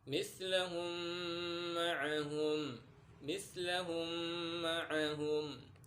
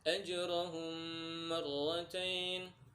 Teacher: Idgham mim itu masuk ke hukum mim mati. Apabila mim mati bertemu dengan mim, cara bacanya didengungkan ya teman-teman.